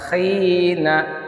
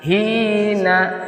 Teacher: Khi itu di ujung ya, di atas tenggorokan bagian atas.